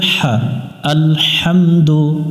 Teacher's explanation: হা এটা হলকের মধ্য থেকে একটু বাতাস বের করে উচ্চারণ করতে হবে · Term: লম্বা হা